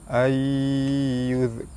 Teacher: nun mati bertemu dengan ya, hukum dia idgham ma'al gunnah, cara baca dia masuk dengan dengung 2 harakat